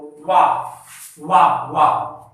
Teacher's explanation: ठीक, तालव मूर्धा दंत और वा का उच्चारण स्थान जो होगा मित्रों वा वा वा, तो इसमें ओष्ठ का इस्तेमाल हो रहा है और जीवा हमारी हल्का से जो है ऊपर वाले दांत को स्पर्श कर रही है, इसलिए इसका क्या हो जाएगा दंतोष्ठ।